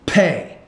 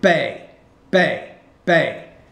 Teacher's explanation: You're not pronouncing the P with enough air.